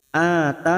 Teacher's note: Ata masing-masing 2 harakat kita panjangkan.